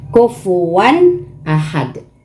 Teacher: So, gaya ng sinasabi ko, pag ayong mga tanwin o di kayong nun sukun, ang sumunod sa kanila na letra is yung idhar, na ito ay ang hukom nito is idhar, na pag binigkas mo, walang huna